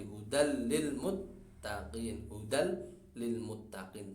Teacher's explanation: tanwinnya masuk ke lam